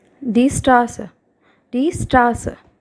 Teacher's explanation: you can notice here the sound of A is very long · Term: long vowel sound